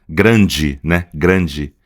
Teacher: a gente vai usar esse A aqui, que é essa vogal anasalada